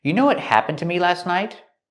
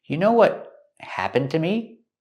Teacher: We hear that T in what is a stop T.